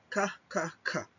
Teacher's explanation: So if you would notice, now when you do that sound, yung tongue natin, yung back of our tongue is touching the soft palate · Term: velar consonant